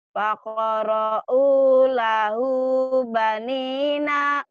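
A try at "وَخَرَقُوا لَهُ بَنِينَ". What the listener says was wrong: Wa bukan fa. Wa kharaqu lahu banina. Wa kharaqu ya diulang. bukan wa kharaqu. Wa kharaqu. Wa kharaqu.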